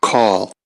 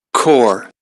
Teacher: The first one ends with a lateral consonant, and the second one ends with the rhotic sound. And please look at the third formant that does not change when the lateral consonant is adjacent, and the third formant goes down before the rhotic sound.